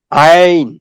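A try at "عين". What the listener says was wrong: একটু গলার ভেতর থেকে হবে। আইন, আইন।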